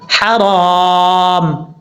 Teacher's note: جب یہاں پہ رکیں گے سٹاپ کریں گے تو میم ساکن ہو جائے گا ، حرام، ہا بریک ہے اس کو بریک پڑھیں گے، بھاری · ہا بریک ہے اس کو بریک پڑھیں گے، بھاری ساؤنڈ کے ساتھ نہیں پڑھنا